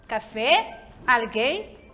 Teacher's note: palavras em que a sílaba tônica é a última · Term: palavras agudas